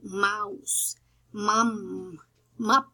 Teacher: The next bilabial sound is called the voiced bilabial nasal. The pronunciation is like mouse, mum, mup.